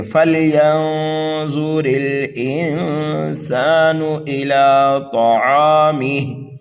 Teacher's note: حرف طا کو پر پڑھنا ہے، یہ مستعلیہ میں سے ہے. طعامی پر جب وقف کریں گے تو یہاں پر بھی وقف بالاسکان ہوگا. · را کے نیچے زیر ہے اس لیے را کو باریک پڑھیں گے. اور یہاں پر بھی دیکھیے نون ساکن کے بعد میں سین حروف اکفا میں سے آ رہا ہے، یہاں پر بھی اکفا ہوگا. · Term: سینٹی کی آواز